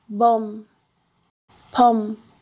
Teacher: Miam sozinho como patim continua com o som de M, mas é pronunciado fechando os lábios.